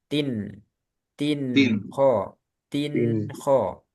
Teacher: تن تن Nah, ini harus jelas karena bertemu kho. Kho makhrajnya di tenggorokan bagian bawah. Sedangkan nun, nah, tin ini kan ada nun. Nun di ujung lidah. Ujung lidah dengan tenggorokan bawah ini kan jauh ya makhrajnya.